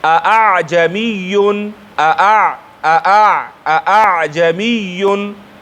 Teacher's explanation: اعجمیون کې چې من تحقیق کوو اعجمیون اعجمیون دا تحقیق ده دواړه حمزګانو کې بغیر د رد و بدل نه د خپل مخرج نه صفا او واضح ویستل